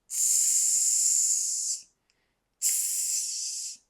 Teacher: The tongue is raised up to the alveolar ridge. So we have both the tongue, that is the tip of the tongue, and the alveolar ridge.